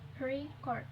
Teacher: pronouncing the word record with stress on the first syllable